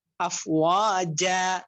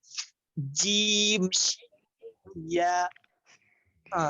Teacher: জিহ্বার মধ্যখান তার বরাবর উপরে তালুর সঙ্গে লাগায়